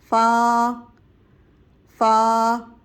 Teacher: با ہونٹوں کے تر والے حصے سے ادائیگی کی تھی با کی۔ فا دانتوں کے کنارے نیچے تر والے حصے سے ٹچ کریں گے تو فا کی ادائیگی ہوگی